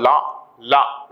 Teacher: நாவின் இரு பக்கங்கள் தடித்து மேற்பற்கள் அடியை நா தொடுதல்